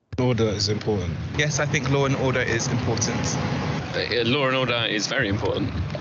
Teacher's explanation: how he was pronouncing the word with an intrusive R